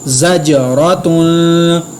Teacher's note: جیم پر میں نے قلقلہ کیا، را کو میں نے پر ادا کیا اور تنوین پر میں نے اخفا کیا